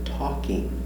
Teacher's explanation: Remember, L is silent, no L.